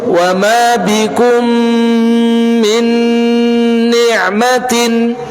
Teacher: Mim sukun bertemu dengan mim menjadi satu huruf yang bertasydid. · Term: idgham mimi